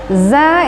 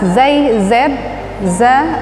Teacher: Za itu jelas z z ujung lidah hampir menyentuh gigi bawah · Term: makhroj Za